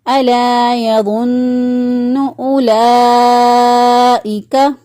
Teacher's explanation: حرف مدہ کے بعد جب حمزہ آ جائے تو اس یہاں پر مد ڈال دیتے ہیں، اس مد کو 3 سے 4 الف کے برابر لمبا کر کے پڑھیں گے